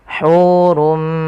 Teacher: Asalnya hurun bertemu dengan mim, tanwinnya masuk kepada huruf mim dan diganti bunyinya menjadi bunyi mim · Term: idgham bi gunnah